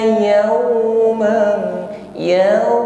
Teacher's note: ada huruf lin yaitu waw sukun, sebelumnya ada fathah yaw, maka itmamu syafatain, himpun bibir ke depan sehingga bunyi benar-benar u. Yauman mengucapkan fathah tanwin bertemu dengan kaf, di sini ikhfa, maka dengungkan, ya, fathah tanwin kita siap pada makhraj kaf sehingga ada bunyi eng.